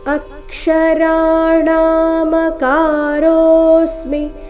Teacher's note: ಅ ಮೇಲೆ ಕದ್ದು ಆಘಾತ ಬರಬೇಕು ಕಾರಣ ಮುಂದೆ ಕ್ಷ ಬಂದಿದೆ